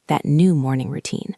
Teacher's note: Notice the intonation on new. She is emphasizing that it is a change.